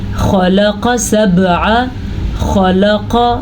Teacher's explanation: خا بھی پر پڑھیں گے اور قاف بھی پر پڑھیں گے کیونکہ خا، قاف، طا، ضا، صاد، زوا یہ وہ 7 حروف ہیں جو کہ حروف مستعلیہ کہلاتے ہیں۔